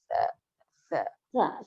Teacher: जुबान की नोक ऊपर के दांतों को लगे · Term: सा का मखरज